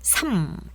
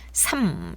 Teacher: 3 할 때는 3 짧게 발음하세요. 그러면서 영어에서 M 사운드를 기억하시면서 3 이렇게 하시고요